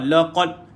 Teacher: Qa naik lidah, jangan keluar air, jangan keluar angin. Dan lam ini jangan baca la.